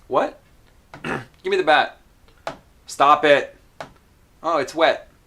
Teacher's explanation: At the end of every sentence here, I did not release the T. And for me, that would normally be the most natural way to say it.